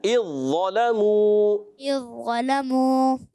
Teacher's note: اذ ظا کی آواز نہ آئے. اذ ظلموا.